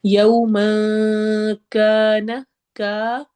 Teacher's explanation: یو اخفا کرنا ہے، نون کی آواز کو چھپانا ہے، اس تنوین میں جو نون ہے یومن والی جو آواز ہے اس کو چھپا کے پڑھیں گے۔ یوم کان، کا الف مدہ ہے، 2 حرکہ لمبا کرنا ہے۔